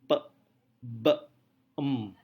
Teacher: Yang pertama adalah bilabial. Bilabial berarti suara itu diproduksi dengan dua bibir. · Ketika kita mengucapkan p, b, em, kita mengatupkan bibir kita dan seperti sedikit menekan kedua bibir itu. Sedikit menekan dan kemudian kita lepaskan.